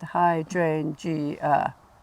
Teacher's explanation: Then the stress is on the third syllable from the end. So you've got hydrangea, 4 syllables, hydrangea, which is the third syllable from the end, hydrangea.